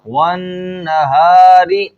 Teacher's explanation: یہاں پر را کو باریک پڑھا جائے گا کیونکہ ہم نے اوپر قواعد کے اندر پڑھا تھا کہ را کے نیچے زیر ہو تو را کو باریک ہی پڑھا جاتا ہے۔